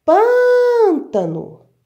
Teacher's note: A sílaba mais forte é o pã. Eu pronuncio ela, prolongo ela muito mais.